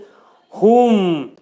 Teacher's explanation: Boğazın aşağısından olacaq bu hərfin məxrəci